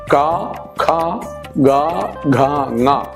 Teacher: ക, ഖ, ഗ, ഘ, ങ കണ്ഠ്യം കഴുത്തുകൊണ്ടാണ് പറയുക